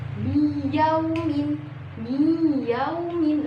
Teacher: Contohnya min yaumin, nun sukun min yaumin bertemu, nun sukun bertemu dengan iya, yang mana iya ini adalah huruf idgham biunah, yaitu di sini cara bacanya mi yaumin, mi yaumin. Nah, di situ ada dengung ketika pembacaan nun sukun ke huruf iya